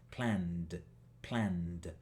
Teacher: tenemos un sonido con una N. La N tiene vibración. Así que vamos a poner una D.